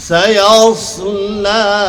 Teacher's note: প্রথমে সিন পরে সদ, সিন পাতা সদ মোটা।